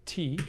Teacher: in an English speaker's mental representation of the word T, we have a voiceless alveolar stop, or coronal.